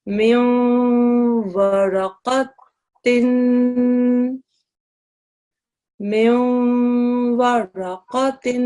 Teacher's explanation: The noon sound isn't completely dropped, but it isn't completely manifested. It's read to a certain extent. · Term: partial assimilation